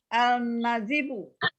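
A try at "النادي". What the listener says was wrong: Nah, ini juga masih nih, alif lamnya masih harus dilatih juga itu. Tuh. Kalau nun, lamnya tidak ada. Iya. Ada yang panjang nggak di kata itu?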